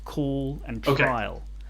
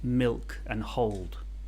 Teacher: But so the light one is the one that's kind of in the front of the mouth and it comes before vowels, and the dark one is the one that's more where your tongue is pushed up into the back of your mouth a little bit, and that's the one that comes at the end of words. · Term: dark L